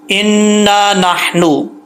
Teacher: नून के ऊपर शद हो या मीम के ऊपर शद हो तो एक अलिफ की मिकदार जो है वो गुन्ना किया जाता है